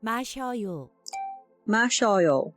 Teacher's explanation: So the two lines here it's adding a Y, so that's why it's shaw. So not just S, the S-Y makes it the sh instead of s